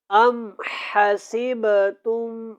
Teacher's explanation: یہاں پہ ہم نے غنہ کرنا ہے، کیونکہ یہاں پہ میم کے اوپر شد ہے